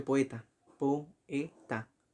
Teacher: O E son abiertas y por eso se separan. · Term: hiato